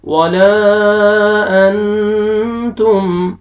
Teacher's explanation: अलिफ से पहले जबर है, अलिफ मद्दा, लाम को आपने खींचना है